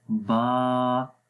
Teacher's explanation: الف سے پہلے با ہے اور با کو ہم باریک پڑھتے ہیں، اس لیے اس کے اندر سے صفت استفال یہاں پر ہے تو پڑھیں گے با، آسانی کے ساتھ پڑھیں گے، کوئی اس میں موٹا نہیں کریں گے۔